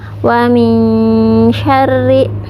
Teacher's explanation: tidak wa min ya, tapi seperti ada y-nya. Wa min syarri ya, seperti itu. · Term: ikhfa